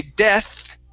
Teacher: dead d d okay when we say death my stung my tongue sticks between my teeth okay and so it sounds similar to a Spanish D